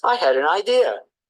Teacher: o D normalmente tem um som parecido com o T, e daí na junção, né, lá consoante vogal fica com som de R. Isso no inglês americano.